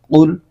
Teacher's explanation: شروع میں قوف ہے، یہ حروف مستعلیہ کا حرف ہے۔ اس حرف کو پر کر کے یعنی موٹا کر کے پڑھنا ہوتا ہے، اور آگے لام کے اوپر جزم ہے تو لام کو قوف کے ساتھ ملا کر پڑھیں گے۔